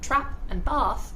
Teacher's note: In my accent trap and bath have different vowels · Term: Trap-Bath Split